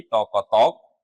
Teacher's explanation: এখানে বফলা ছিল, বয়ের উচ্চারণ হয়নি